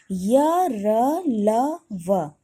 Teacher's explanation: इनके उच्चारण में जीभ मुख के किसी भाग को पूरी तरह से स्पर्श नहीं करती है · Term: अंतःस्थ व्यंजन